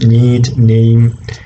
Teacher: tip of the tongue is touching the teeth rates right so the oral cavity is closed air escapes through the uh you know nasal cavity therefore it's a voiced alveolar nasal sound